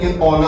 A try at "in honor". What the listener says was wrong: That H is not pronounced.